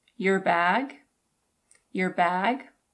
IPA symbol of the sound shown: jər